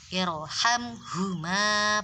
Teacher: ro sukun didahului hamzah wasol maka harus dibaca tebal. Jadi bacanya irhamhuma, bukan irhamhuma, bukan gitu.